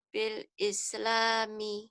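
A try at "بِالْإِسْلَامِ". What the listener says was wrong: bil islami, B-nya yang jelas, bil islami.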